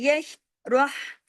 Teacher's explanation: یش روح، اب دیکھیں جماؤں کے ساتھ پڑھنا ہے، یش روح، را ہیوی کرنا ہے، اور ہا جو ہے یہ گلے سے پڑھا جائے گا